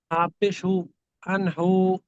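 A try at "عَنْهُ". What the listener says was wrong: এই হু টানবেন না।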